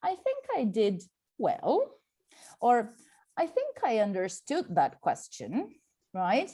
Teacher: you also notice a rising intonation you know at the end of some of his sentences